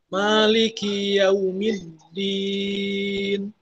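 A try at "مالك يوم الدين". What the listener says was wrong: Maliki. Maknya lebih tipis. Maliki.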